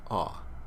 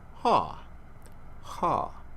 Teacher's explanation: With a rough breath on it, it's pronounced ha